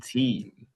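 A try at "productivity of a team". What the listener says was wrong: Not, that was horrible. You did not stretch any of the words out.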